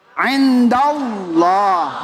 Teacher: Makanya lafal Allah dibaca tebal.